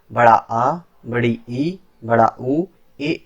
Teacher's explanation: दीर्घ स्वर जिनके उच्चारण में हर्ष स्वर से भी अधिक समय यानी 2 मात्रा का समय लगे उसे दीर्घ स्वर कहते हैं।